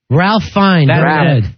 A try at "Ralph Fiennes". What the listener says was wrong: The L is silent.